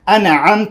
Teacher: ایاک نعبد و ایاک نستعین اهدنا الصراط صراط المستقیم صراط انعمت نون ساکن ده شته عین راغلی، عین حرف دی اظهار دی، دلته اظهار کیږي